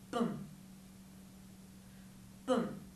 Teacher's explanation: both of these sounds are what we call bilabial sounds because they use both of your lips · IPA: b m